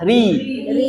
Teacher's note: ro kasrah RI tipis